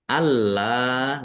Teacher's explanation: lamnya ada tasdidnya dibaca double ditekan biar tampak doublenya